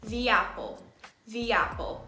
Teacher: Apple starts with a, so the apple gets a y sound inserted into the middle.